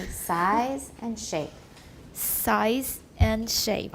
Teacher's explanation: it's size because it's voiced at the end